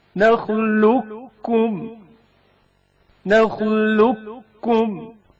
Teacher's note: قاف ساکن کا کاف متحرک میں ادغام